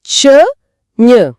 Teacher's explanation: நாவோடு இடைப்பகுதி நடு அண்ணத்தின் இடைப்பகுதியை பொருந்துவதால பிறக்குது. ம் நாக்கின் இடை, அண்ணத்தின் இடை.